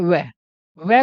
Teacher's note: वह दांत और होठों दोनों से बोला जाता है, इसलिए इसको कहते हैं दंतोष्ठ